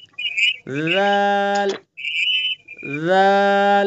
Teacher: ذال کا مخرج زبان کی نوک اور ثنا علیہ کا کنارہ، نرمی کے ساتھ، جہاں سے سا کو نکالنا ہے وہیں سے ذال کو نکالنا ہے، ذال ذال، ٹھیک ہے؟